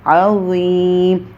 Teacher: ذا میں تھوڑا سا ہمارا جو زبان ہے وہ اوپر کی طرف تالو کی طرف اٹھے گی، ہم اس کو گولم کر کے پڑھیں گے عظیم، لیکن اس کے اوپر وسلنگ جو ہے وہ نہ ہو، عظیم نہ ہو، عظیم کر کے ہم نے نہیں پڑھنا، ٹھیک ہے۔